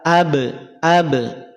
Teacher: Qalqalah ini yang berada di atas lafaz abyad bukan pada huruf Dod tapi pada huruf ba